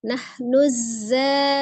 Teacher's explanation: sofir di huruf zai, kemudian tasdid ya